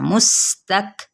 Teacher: میم کی پیش کو ہم نے سین کے ساتھ ضرور ملانا ہے